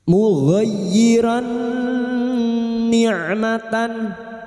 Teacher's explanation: Huruf gain masuk pada huruf ya. Hanya masuk tanpa ditahan lama-lama tanpa mendengung.